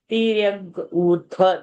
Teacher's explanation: Tirya Urdhva, that Dhva is a Mahaprana.